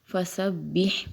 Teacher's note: بہت سے لوگ فسبح پڑھتے ہیں، فسبح نہیں پڑھیں گے، با کے نیچے زیر ہے، فسبح پڑھیں گے، با کو معروف پڑھیں گے نہ کہ مجہول